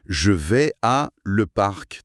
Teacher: La succession de la voyelle ouverte A et de la consonne latérale L oblige la langue à faire un mouvement presque contrarié. Ah oui, le ça fait comme un petit trébuchement dans la bouche.